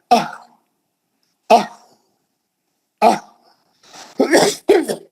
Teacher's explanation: तो ये दो चश्मी हा ये निचले हलक से निकलती. आप सीने की हवा से झटका मार, आह आह आह तो वो जो हा है वो दो चश्मी हा है, वो जो है यहां से निकलती हो, उसका मखरजी ये निचली हलक है.